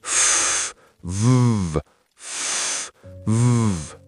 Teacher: The only difference is vibration. For F, air only. For V, the lips and teeth stay the same, but the sound vibrates.